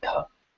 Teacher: So just keep in mind that the D sound here is the tip of the tongue touching the teeth with air. So you should feel air on your hand when you say dha.